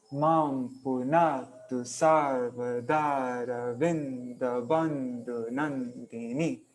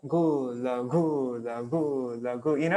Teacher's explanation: it's long, short, long, short, long, short, long, short. So it's like a wave